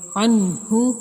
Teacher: ٹھیک ہے، تو ادھر نون کا اظہار ہوگا بغیر ظاہر کیے، بغیر گنہ کیے ظاہر کر کے نون کے پڑھیں گے